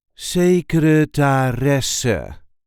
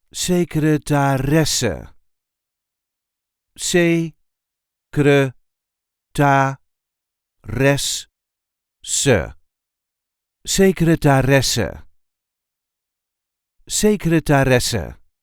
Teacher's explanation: There is a light emphasis on the fourth syllable.